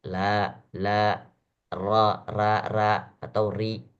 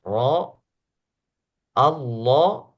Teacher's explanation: Adapun dalam keadaan tarkik, maka yang terangkat hanya ujung lidahnya saja.